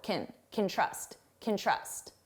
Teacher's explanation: you hear trust more because it's the main verb, and can, which sounds like kin, is very short